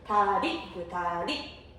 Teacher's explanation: 리을이 초성이 올 때는 탄설음, 설탄음이 돼요